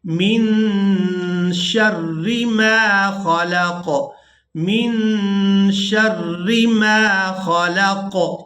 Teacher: یہاں اخفا کریں گے، آواز کو ناک میں چھپائیں گے